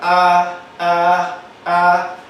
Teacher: este caso vuelva a comenzar con la anterior abierta sería a eso se llama vocal anterior abierta anterior abierta es decir que se abre el tracto todo muy bien y